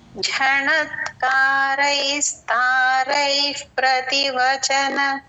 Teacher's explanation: ఆ రై తర్వాత ఉన్న విసర్గ ప ముందు విసర్గ ఎఫ్ లాగా చెప్పాలి